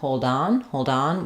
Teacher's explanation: hold on with a flap yes um we do um because when we link that D to on hold on hold on we use a flap there